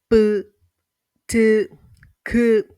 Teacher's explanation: stops or plosives, which involve full closure and sudden release while producing these sounds